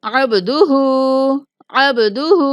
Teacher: ہا کے اوپر الٹا پیش ہے، اس لیے ہا کو ایک الف کے برابر کھینچیں گے۔